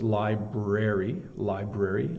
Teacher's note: often people um get lazy and don't pronounce the r and it's incorrect